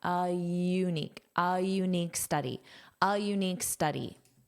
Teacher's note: Notice you use a little bit of a y glide.